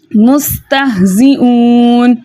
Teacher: نحنو مستہزئون ایسے کریں گے ہم تو ہمارا جو پیش ہے وہ کھنچ جائے گا. تو ہم نے پیش کو بغیر کھینچے بغیر جھٹکا دیے متوسط اور معروف طریقے سے پڑھنا ہے اور ہم نے یو کے ساؤنڈ کے ساتھ پڑھنا ہے